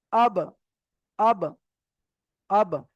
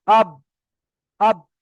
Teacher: ঠোঁট দুটো যে জায়গায় লেগে উচ্চারণ হয় সে জায়গায় লেগে মাত্র আলাদা হয়ে যাবে, লেগে মাত্র আলাদা হয়ে যাবে। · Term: কলকলা